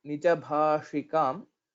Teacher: shakara will be the murdhanya shakara, similar to ta, tha, da, dha, na